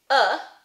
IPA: ʌ